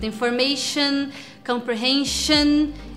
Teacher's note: Então information, comprehension. É um shan que não chega a ser um shon